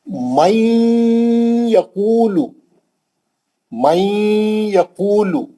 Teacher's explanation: اب آپ اس کو ادغام مال غنہ سے پڑھیں گے, نون کو یا میں سختی سے ملائیں گے اور غنہ کر کے پڑھیں گے